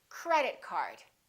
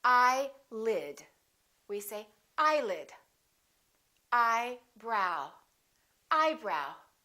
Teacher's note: two words representing one object we stress the first word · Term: compound nouns